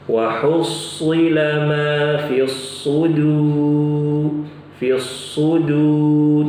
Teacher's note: Perhatikan ibu-ibu, huruf shadnya di sini tebal, tebal. Ya, jangan dibaca su tipis.